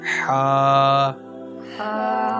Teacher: آگے ہا کو بھی زیادہ لمبا نہیں کرنا، ہا، اس کو حلق سے، ٹھیک ہے، حلق سے، یہ حلق کے درمیانی حصے سے